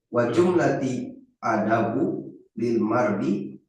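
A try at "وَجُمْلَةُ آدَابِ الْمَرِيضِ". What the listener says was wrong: lil mari nggak ada linya jumlah ada bil maridi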